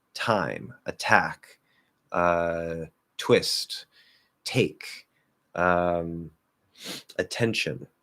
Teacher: Okay, these are all strong aspirated T's.